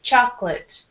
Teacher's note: with U.S. pronunciation, we say only two syllables, chocolate.